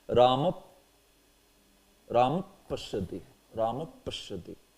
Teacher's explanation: That Upadmaniya sound is done by blowing through rounded lips.